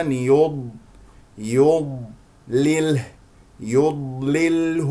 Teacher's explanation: الياء مرققه والضاد مفخمه لا تفخم